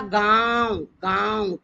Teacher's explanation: कुआ आ में आवाज आ रही है नाक में से भी मुंह में से तो आ पर लग जाएगा चंद्रबिंदु मैंने बोला गांव गांव तो गांव बोल कर देखें गांव में नाक में से भी आवाज आ रही है और मुंह खोलकर भी आवाज निकल रही है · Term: अनुनासिक